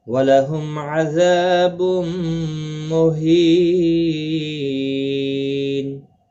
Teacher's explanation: تنوین کے بعد یرملون کا میم آ رہا ہے، اس وجہ سے یہاں پر ادغام ہوگا مع الغنہ، گنہ کے ساتھ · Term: ادغام مع الغنہ